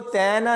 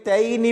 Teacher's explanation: اس کے بعد یہاں دیکھیں تا کو یا کے ساتھ ملاتے ہوئے بہت سارے لوگ اس کو تے نہ پڑھ دیتے ہیں، تو اس کو تینا نہیں پڑھنا بلکہ تینی پڑھا جائے گا